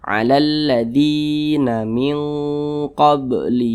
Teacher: tepat berada di belakang huruf Ya Sukun maka dia dibaca panjang maka dzi dibaca panjang Mad Thobi'i panjangnya dua harakat atau kira-kira dua ketukan